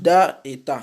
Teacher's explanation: l'extrémité de la langue s'appuyant sur la racine des incisives supérieures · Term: La lettre dal et la lettre ta